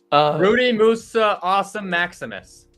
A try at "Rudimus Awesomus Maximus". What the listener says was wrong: You forgot the Awesomus Maximus. You forgot the